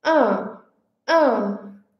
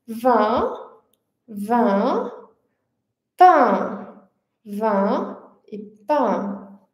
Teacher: Então os lábios eles ficam esticados, a boca se abre menos do que na bogal anterior e a língua se contrai um pouquinho mais.